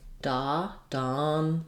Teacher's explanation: Letter O in Donald says the ah vowel, Donald's. And then again, this A is almost no vowel at all.